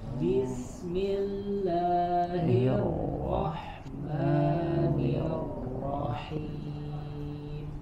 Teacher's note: nir di huruf ro-nya tetap dialirkan, suaranya ada suara yang mengalir, jangan diputus. Jangan nirrohim, tidak terputus suaranya tapi tetap mengalir.